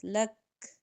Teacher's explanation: کاف جو ہے نا اس میں ہمس پایا جاتا ہے ، اس طرح سے کاف کی آواز آتی، سانس کی آواز،